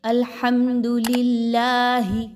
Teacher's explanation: ہا کو اس کے مخرج سے نکالیں گے حلق کے بالکل آخری حصے سے